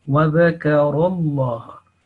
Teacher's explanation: So ra will be thick, lam will be thick together. Wa dhakarallah, and ha again shorter. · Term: thick lamul jalala